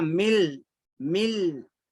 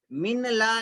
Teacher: नून की आवाज को नहीं पढ़ना है, लाम पढ़ना है।